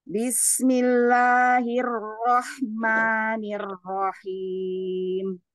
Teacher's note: tebalkan ro yang tasdid karena rnya berharakat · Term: ro yang tasydid